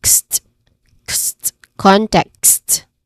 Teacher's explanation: it has a short E vowel sound and consonant cluster sound of K, S, and T. Kst, kst, context.